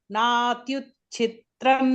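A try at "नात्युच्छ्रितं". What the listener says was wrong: Not Chitram. Natyushtritham nati nicham. Uchtritham. Uchtritham is higher. Na ati uchtritham. Natyushtritham nati nicham.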